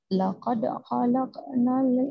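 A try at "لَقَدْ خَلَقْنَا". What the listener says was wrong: Masih berat. Laqad khalaqa. Nah, jadi tidak laqad khalaqa. Nah, itu berarti masih berat. Kalau ringan, laqad khalaqnal ya, bisa membedakan ya. Yang pertama, yang berat seperti ini, laqad khalaqnal berat, laqad khalaqnal ringan ya.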